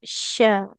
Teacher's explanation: Dia di tengah lidah menempel ke langit-langit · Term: syin